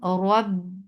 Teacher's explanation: Attach with ba. Ba will get sifa of shidda. The makhraj will cut off the sound.